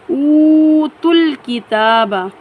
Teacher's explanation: واو ساکن سے پہلے پیش ہے، 1 الف کی مقدار کھینچ کر پڑھیں گے۔ واو تا کو ڈائریکٹ لام جزم والے لام کے ساتھ میں ملائیں گے۔